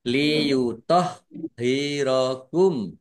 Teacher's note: Liyohirokum. H-nya dibaca dobel ada tasdidnya ditekan biar tampak dobelnya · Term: dibaca double